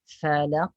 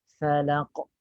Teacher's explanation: Syiddah tu tersekat, tertahan aliran suara, sebab tu dia ada qalqalah.